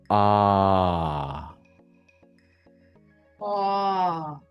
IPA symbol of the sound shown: ɑː